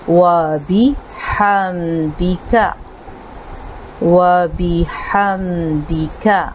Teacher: با زیر بی، دال زیر دی، یہ بے اور دے نہیں ہے، بی اور دی ہے